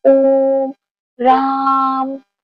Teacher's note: आप ओम का जब स्वर का उच्चारण कर रहे हैं तो उसमें ज्यादा समय लग रहा है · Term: लुप्त मात्रा